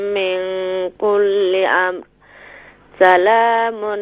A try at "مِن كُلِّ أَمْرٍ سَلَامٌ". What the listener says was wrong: من کل امر. یہاں را کو بھی کلیئر کریں.